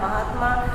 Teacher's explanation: इसी प्रकार से अन्य शब्द भी हैं, आ से आ का परिवर्तन, तो महात्मा, महात्मा का हम जब विच्छेद करेंगे तो महाधन आत्मा, महाधन आत्मा, महा में आ का स्वर सुनाई दे रहा है, आ की ध्वनि सुनाई दे रही है और आत्मा में आ है, दोनों दीर्घ आ आपस में मिलकर आ में ही परिवर्तित होंगे। तो इस प्रकार शब्द बनेगा हमारा महात्मा। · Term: दीर्घ स्वर संधि